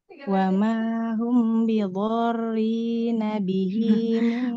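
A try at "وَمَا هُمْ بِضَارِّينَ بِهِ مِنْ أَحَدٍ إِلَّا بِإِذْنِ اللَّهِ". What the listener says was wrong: Huruf dotnya kurang panjang ya. Huruf dotnya 6 harokat. Bidharrina bihi min ahadin illa biiznillah. Illa biiznillah. Panjang pendeknya ya. Ya, panjang pendek. Kemudian huruf H-nya latihan lagi. Hahihu.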